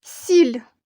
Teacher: м'який знак не позначає ніякого звуку він пом'якшує попередній звук